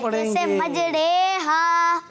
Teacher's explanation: زبر کو زیر کی طرف، الف کو یا کی طرف مائل کر کے پڑھنے کو امالہ کہتے · ری نہیں، یعنی ری نہیں بلکہ رے پڑھیں گے